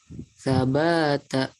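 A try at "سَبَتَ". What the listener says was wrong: Kurang di ayun. Sabata.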